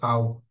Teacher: লিন আমরা বিনা টানে তাড়াতাড়ি পড়ে যাব